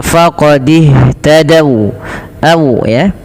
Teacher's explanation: Nah wau di sini berhenti, wau-nya dimonyongkan.